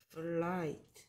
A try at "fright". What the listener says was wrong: 또 L처럼 발음한다. 플라이트가 아니고요. 프라이트. 프라이트.